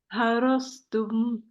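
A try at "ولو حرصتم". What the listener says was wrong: Lagi. Kalau dia tipis, dia jadinya sin. Ini sod, tebalin. Walau harastum.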